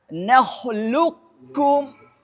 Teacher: Ah, kalau bacaan idgham kamil, maka huruf qof yang pertama diidgamkan secara utuh, dimasukkan secara utuh atau dileburkan secara utuh ke huruf kaf tanpa menyisakan sedikit pun sifat-sifat daripada huruf qof. Namanya idgham kamil.